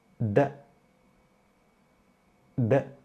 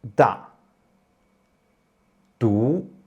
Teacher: D is also an unaspirated consonant, and when you pronounce D, let the tip of your tongue touch the gum of the upper teeth